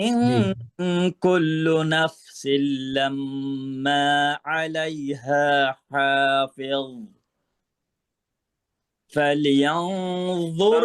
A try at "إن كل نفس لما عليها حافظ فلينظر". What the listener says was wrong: লাম ধরে, লাম লাম কলকলা হয়ে গেছে, ফালে, ফাল ফাল দিয়ে উঠছে, বুঝছেন?